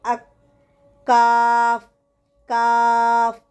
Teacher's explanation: زبان کی جڑ کو ذرا منہ کی طرف ہٹ کر اوپر کے تالو کے ساتھ لگانے سے نکلتا ہے